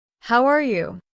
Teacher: Did you notice that the words almost connect? It sounds like how are ya? That is the natural rhythm.